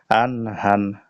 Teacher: এটা হলো আইন আর এটা হলো বড় হা আন হান হলকের মাঝখান থেকে